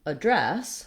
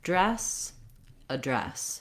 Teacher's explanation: can also say address for the noun which would mean that you're using dress as your stressed syllable so it's long